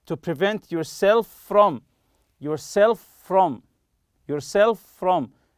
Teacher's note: as if it's one word with one F sound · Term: link two consonants